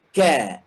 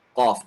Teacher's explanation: Jadi ka kita bisa rasa kaf keluar dari bahagian yang keras, qaf keluar dari bahagian yang tidak keras. Qaf yang tidak keras dan kaf yang keras.